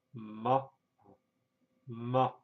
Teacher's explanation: For example, in Chinese, the sound ma, M-A, said in high-level tone means mother-in-law, ma. However, said in a falling and rising tone, it means horse